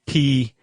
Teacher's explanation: we say P, we aspirate it, right? P like you're breathing when you say it.